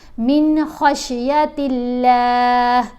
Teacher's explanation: من نون کے اوپر غنہ نہیں کریں گے کیونکہ نون ساکن کے بعد حروف حلقی میں سے حرف آ رہا ہے خا, تو یہاں پر من خشیت اللہ نہیں پڑھیں گے, یہاں جلدی سے اس کو پڑھا جائے گا من خشیت اللہ, لام کو باریک پڑھیں گے.